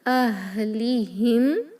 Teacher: ولا الی اہلہم، اہلہم، ہا بہت ہی پست آواز سے ہا نکلتا ہے کیونکہ ہمارے حلق کے آخری حصے سے ادا ہوتا ہے جو سینے کے قریب ہوتا ہے۔ اہلہم، میم ساکن پر نو غنہ، اظہار شفوی ہے